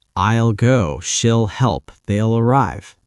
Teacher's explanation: For will, we often shorten it to ill.